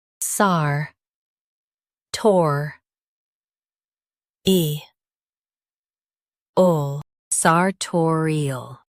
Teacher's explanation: Stress tor and keep eel light.